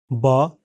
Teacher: इस ध्वनि के उच्चारण में ऊपर और नीचे के होठ आपस में मिलते हैं और बंद स्वर यंत्र से फेफड़ों की हवा विस्फोट के साथ बाहर निकलती है। यह हिंदी के बा व्यंजन जैसा ही इसका उच्चारण है।